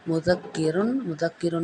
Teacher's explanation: دال نرمی سے ادا ہوگا اور باریک کاف ادا ہوگا